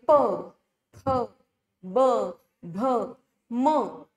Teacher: प, फ, ब, भ, म हे उच्चार करताना आपल्याला दोन्ही ओठ वापरावे लागतात. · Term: ओष्ठ्य वर्ण